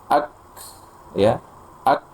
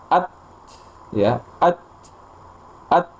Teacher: ada aliran hamesnya udaranya atau ee nafasnya setelahnya ak ya ak jadi jelas sekali setelah tertahan suaranya ada hembusan nafas